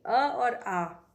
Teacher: अ और आ कंठ से बोले जाते हैं